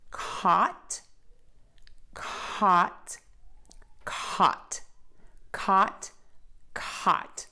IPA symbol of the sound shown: kɔt